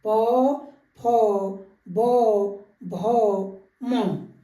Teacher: प वर्ग के सारे व्यंजन जो है हमारे औष्ठ से निकलने वाले व्यंजन हैं